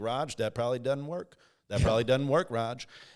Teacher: There's a nasal, sort of quality to the O that almost makes it more like an A.